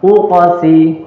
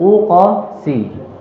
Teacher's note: Huruf qaf itu dipantulkan saja pada makhrajnya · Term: Qalqalah